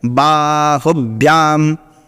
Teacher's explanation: ह में ह्रस्व है, तो देखिए कितनी तेजी में निकल गए हैं